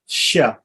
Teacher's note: palatal s means it's pronounced shu with the tongue flat